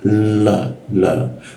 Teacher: Nah, itu la Indonesia ya. Kalau di Arab, ujung lidah itu tidak bertemu gigi, tapi di atas langit-langit sebelum gigi. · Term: huruf la